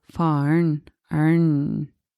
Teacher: So for instance, when you say the father, faren, but when you say it quickly, you will pronounce it faren, arn. So the E disappears, and you will get one syllable that is just arn. So it would be fa-arn.